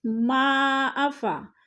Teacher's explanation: حروف مدہ کے بعد حمزہ دوسرے کلمے میں ہے تو مد منفصل 4 الفی مد ہے